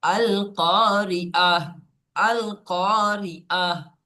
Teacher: ওয়াকফ করলে গোল তাকে হা সাকিন করে পড়তে হয়।